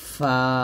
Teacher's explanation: উপরে দুই দাঁত নিচে ঠোঁটের পেটে লাগিয়ে ফা টা পাতলা করে উচ্চারণ করতে হবে